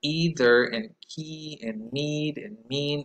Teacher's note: all of that is very high all of that is very front and all of that is very tense and not rounded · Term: tense e, tense E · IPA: [i]